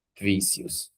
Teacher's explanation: lápis está acentuado na penúltima e vícios também está acentuado na penúltima sílaba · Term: paroxítono